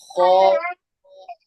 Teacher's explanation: होठ गोल होंगे, ध्यान रखना।